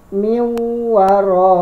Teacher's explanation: Nah, nunnya tidak ada, langsung dileburkan. N-nya langsung diganti sama huruf w. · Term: idgham bi ghunna